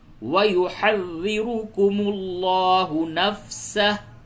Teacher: کو پر کریں گے اور لام کو بھی پر کریں گے، لفظ اللہ کے لام سے قبل پیش ہے اور را پہ پیش ہے، را بھی پر ہوگی اور لفظ اللہ کا لام بھی پر ہوگا